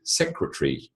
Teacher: ey is still there you just don't say it the same when you say secretary secretary you're effectively eliminating the a only in your pronunciation not when you spell it so just because you say secretary